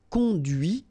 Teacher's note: final T is not pronounced